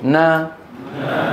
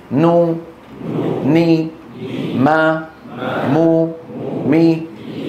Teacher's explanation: وتكون الغنة أنقص ما تكون، أنقص يعني أكثر نقصانا، أقصر ما تكون في النون والميم المتحركتين